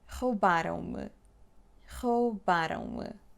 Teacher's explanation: Attention here, it's not rou. It's reduced to o.